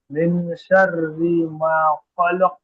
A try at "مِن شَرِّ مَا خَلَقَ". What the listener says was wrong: এখানে একটু গুণনা করেন আর একটু বেশি করে পড়েন।